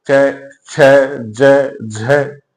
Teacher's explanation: जैसे इनका उच्चारण करके देखें हम, क हम बोलने में बड़ा आसान रहेगा क, लेकिन च वाली लाइन को आप बोलकर देखें, च, छ, ज, झ, इनके उच्चारण में संघर्ष की स्थिति उत्पन्न होती है। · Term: स्पर्श संघर्षी